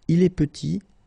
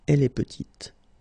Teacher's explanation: Final T is not pronounced, and then when you add this E at the end, you get the sound T